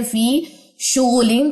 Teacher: یوما یا خالی ما قبل زیر فی ہے 2 کاؤنٹس لمبا کرے. فی شغلین تنوین کے بعد فا تو یہاں پہ اخفا حقیقی کیجئے